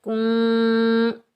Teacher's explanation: کاف کو ہم نون ساکن کے ساتھ ملائیں گے اور نون پر ہم اخفا کریں گے اور بغیر کھینچے پڑھیں گے، کن، تا کے اوپر پیش آگے